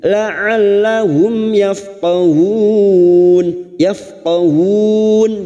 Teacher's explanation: mim sukun bertemu ya Idhar syafawi mim sukun dibaca jelas tanpa mendengung